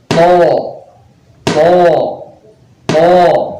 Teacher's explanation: Makhrajnya keluar dari ujung lidah bertemu dengan gigi bagian atas. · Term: huruf to